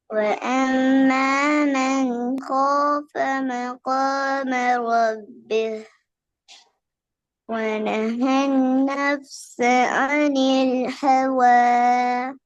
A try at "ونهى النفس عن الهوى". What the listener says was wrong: عين வரல. و ونهى النفس عن الهوى. பெரிய வரணும். عن الهوى.